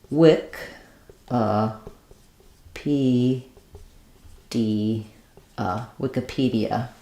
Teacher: We're very short and unstressed on the second letter I, and then stressed on the P, D, So it sounds like wick, P, D, Wikipedia.